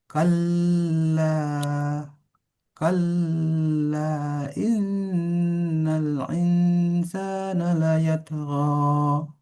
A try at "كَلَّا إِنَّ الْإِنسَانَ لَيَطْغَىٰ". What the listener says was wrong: Kalla tidak perlu ditekan, tidak perlu terlalu ditekan. Kalla tidak perlu kalla ya. Tidak perlu.